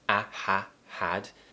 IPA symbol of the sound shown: æ